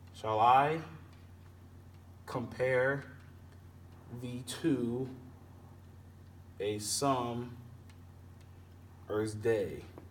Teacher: as it seems as iambic pentameter because you have the stress you have the unstressed and then stressed syllables